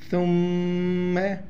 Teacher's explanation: میم مشدد ہے، یہاں پر غنہ کریں گے